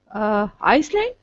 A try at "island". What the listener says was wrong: Okay, do not pronounce the S. Island.